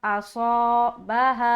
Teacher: सौद को मोटा रखेंगे, साथ ही साथ अलिफ भी मोटा होगा जब अलिफ मद्दा करेंगे